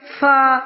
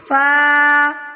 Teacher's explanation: یاد رہے کہ فا پڑھتے ہوئے پھونک کی آواز نہ نکلے